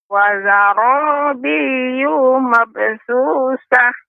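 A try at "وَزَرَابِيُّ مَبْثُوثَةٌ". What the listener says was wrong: Yu tidak boleh panjang, Nek. Yu dibaca dengan pendek. Wazarabiyyu mabthuthah.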